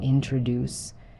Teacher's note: in the word introduce, the stress is on the last syllable, introduce.